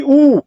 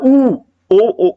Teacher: ऊ जैसे आप बोलोगे तो आपके ओठ देखो गोल हो रहे हैं, प्रेशर कहां जा रहा है, ऊ, ओ होठों पे जा रहा है, तो ये क्या हो जाएगा, ऊ क्या हो जाएगा, ओष्ठ हो जाएगा।